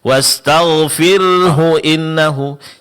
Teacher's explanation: Jadi jangan lupa yang perlu diperhatikan itu adalah menjelaskan huruf ha setelah huruf ra sukun. Karena ra di sini dijelaskan juga dan di samping dia ditipiskan, ha sukun setelahnya juga dijelaskan.